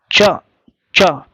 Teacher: जैसे च, च, ये जीभ लग रही है, तो जीभ लग रही है तो ऊपर वाले हिस्से में लग रही है, दांतों के ऊपर जो होता है तालु, तो आगे की तरफ लग रही है